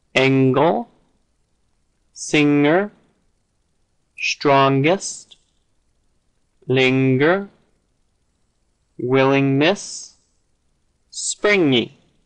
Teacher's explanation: instead of the air escaping through the mouth the air escapes through the nose hence nasal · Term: NG sound